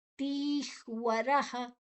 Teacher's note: ರದ ನಂತರ ವಿಸರ್ಗದ ಉಚ್ಚಾರಣೆ ಹ